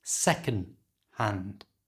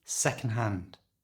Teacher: When we say second-hand in fast natural speech, we usually don't pronounce the D at the end of second.